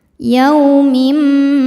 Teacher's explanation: Maka lamnya panjang boleh dua atau empat atau enam harakat asal konsisten dalam sekali baca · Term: mad arid lisukun